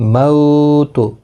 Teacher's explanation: مو واولین ہے، تھوڑا نرمی کے ساتھ کھینچ کر ادا کریں گے